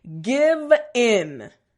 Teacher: that V sound front teeth bottom lip and a little bit of vibration